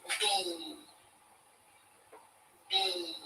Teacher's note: when i say out loud the letter b i feel vibrations in my uh throat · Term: voiced